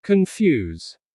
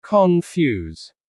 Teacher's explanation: The stress is on the second syllable.